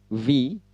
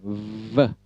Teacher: itu ada getaran di bibir bawah. Atas bertemu gigi atas bertemu bibir bawah, lalu ada getaran, V, itu untuk V.